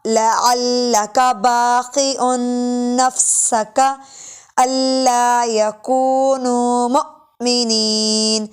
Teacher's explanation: حمزہ ساکن ہے اس لیے اس کو جھٹکا دے کر پڑھا جا رہا ہے